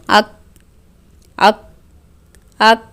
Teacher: اب ہم اس کی مشق کر کے دیکھتے ہیں، جیسے حمزہ کاف زبر اک اک اک، دیکھیں ہوا باہر نہیں آ رہی، یعنی کہ صفت شدت ہے